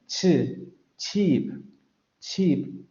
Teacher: un fonema africado que se compone, como bien habíamos comentado en su momento, de un momento oclusivo y de un momento fricativo. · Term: africada sorda postalveolar